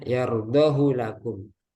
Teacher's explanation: Jadi di riwayat yang kita baca, riwayat Hafiz an Asim Jalur Syatibi, nah, khusus untuk kata ini yardahu lakum, hunya itu tidak dibaca panjang, bukan yardahu lakum, tapi yardahu lakum. Nah, jadi hunya pendek, satu harokat aja khusus pada kata ini. Jadi ini pengecualian.